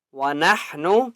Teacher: ہا کے عوض حلق سے نکالیں گے